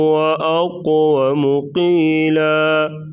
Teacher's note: اقو قاف کو موٹا کریں گے اور قلقلہ کریں گے۔